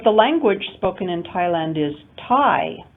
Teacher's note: stress on chinese and thai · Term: contrastive stress